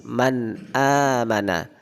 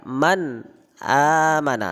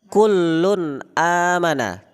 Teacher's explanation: Jadi ketika ada kalimat man amana, itu kita nunnya dibaca jelas